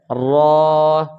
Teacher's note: حرف را زبان کی نوک، یہ زبان کی نوک اور مقابل کے تالو سے، یہ تالو سے اس کو ادا کیا جاتا ہے، را۔ زبان کی نوک اوپر تالو کے ساتھ لگے گی تو یہ را ادا ہو جائے گا